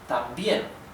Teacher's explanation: the stress in the intonation is in the last syllable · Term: sílaba tónica